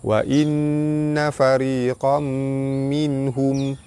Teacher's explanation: nun sabdu hukumnya wajibul guna, ditekan dan ditahan serta dengung 2 harakat